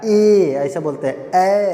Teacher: जब ए पढ़ते हैं तो कंठ से निकलता है ना, कंठ से निकलता है और तालु से जाके टकराता। हमारा जीभ जो है जाके दांतों के अंदर का स्थान जो तालु है उसमें स्पर्श करता है। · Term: कंठ तालु